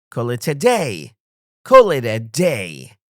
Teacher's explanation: Stress on call and day.